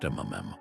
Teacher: where the lips meet and the sound is internalized